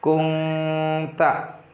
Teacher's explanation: Contohnya dalam ayat ini pada kalimat kunta tidak dibaca kunta, tapi nun disamarkan ke suara eng karena ada nun sukun bertemu dengan ta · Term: ikhfa